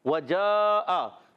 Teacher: جیم کا مخرج وسط زبان وسط تالو سے · واو کی ادائیگی ہوتی ہے ہونٹوں کی گولائی سے دونوں ہونٹ گول کریں گے تو ادا کریں گے واو واو پر زبر ہے بغیر کھینچے